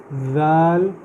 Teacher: اذا یہاں پہ سب سے پہلی بات نوٹ کرنے والی یہ ہے کہ یہاں پہ ذال ہے، زا نہیں ہے۔ ذال زبان کی ٹپ کو میں اپنے اوپر والے دانتوں کی ٹپ کے ساتھ لگا کے نکال رہا ہوں